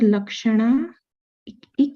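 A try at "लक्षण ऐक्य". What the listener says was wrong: Aikye. I, it's a long I. Aikye.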